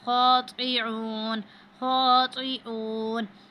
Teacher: خو کو موٹا کر کے پڑھتے ہیں اور طا اور تا میں فرق رکھتے ہیں